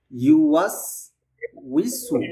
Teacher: ওয়াও, এখানে যে আমরা কয়টা হরফ দেখতে পাচ্ছি, এই পুরোটা শব্দের মধ্যে সব জায়গাতেই ঠোঁট গোল। কারণ এই যে ইয়ার উপরে পেশ আছে, ইয়াদ উচ্চারণ করতে ঠোঁট গোল হবে। · ওয়াও যে আছে, ওয়াওয়ে তো ঠোঁট গোল হচ্ছে।